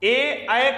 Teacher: ए का उच्चारण स्थान है कंठ तालव्य